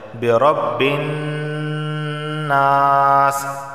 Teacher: نون پر تشدید ہے، غنہ ہوگا۔ جب بھی نون پر تشدید آئے تو وہاں غنہ ہوتا ہے۔